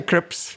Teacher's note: He couldn't get the first s in there.